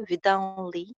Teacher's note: एन और एन को link करना है तो विदाउनली